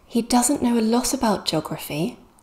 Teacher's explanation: we're stressing the doesn't the does there because it's a negative